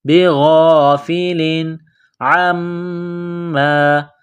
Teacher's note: وما اللہ بغافل غین کو موٹا کرنا ہے، بغافل تنوین کے بعد عین ہے، حروف حلقی ہے تو یہاں غنہ نہیں کریں گے، آواز ناک میں نہیں چھپائیں گے